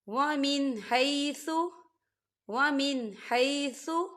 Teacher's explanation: نون ساکن کے بعد ہا آ رہا ہے۔ ہا جو ہے حروف حلقی میں سے ہے، تو یہاں پر اظہار ہوگا اور اسے ہم بنا غنّے کے پڑھیں گے۔